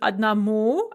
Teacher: again note the stress on the oo